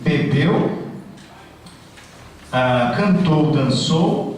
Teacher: são palavras que têm a sílaba tônica forte na última sílaba, o famoso oxítono, a primeira, aliás, da direita para a esquerda.